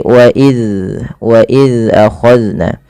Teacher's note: Itu ada kami membahas di hukum sejulanya bagaimana cara melafalkan zal ya. Zal yaitu ujung lidahnya menempel dengan gigi seri atas. Maka dan huruf zal tidak boleh terpantulkan, tidak boleh wa iz ya.